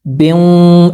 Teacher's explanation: गुन्ना होगा, नाक में थोड़ी देर आवाज़ को रोकेंगे